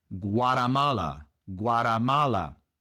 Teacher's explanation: La T se pronuncia como si fuera una R en español.